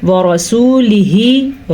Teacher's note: را کو ہم اس میں پر پڑھیں گے کیونکہ را کے اوپر زبر ہے